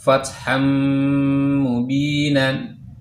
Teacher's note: Fatham mubinan aslinya fathan, tapi ketika bertemu dengan huruf mim jadinya masuk bunyi nun sukun atau tanwinnya itu ke huruf mim. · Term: idgham bi gunnah